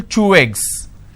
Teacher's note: So I'm using way sound in between these 2 eggs. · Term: linking